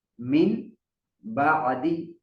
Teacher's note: نون ساکن یا تنوین کے بعد با آ جائے تو یہ دونوں میم بن جاتے ہیں اور ان پر غنہ ہوتا ہے